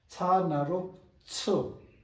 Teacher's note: Cha with a hissing sound like pressure cooker. The sound a pressure cooker makes.